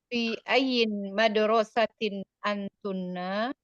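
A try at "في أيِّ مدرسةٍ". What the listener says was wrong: Ayyi, jangan ditanwin, Umi. Fi ayyi madrasatin. Fi ayyi, bukan fi ayyin, bukan tanwin ya-nya, ayyi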